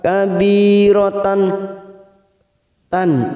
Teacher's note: ta marbut yang berharakat fathah tanwin yang bertemu Hamzah kita baca jelas tanpa mendengung